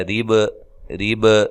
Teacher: را کو باریک پڑھنا ہے، را کے نیچے زیر ہو، را کو باریک پڑھا جاتا ہے۔